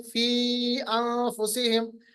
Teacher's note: इसको मद जायज कहते हैं, इसको 4 अलिफ के बराबर लंबा किया जाता है।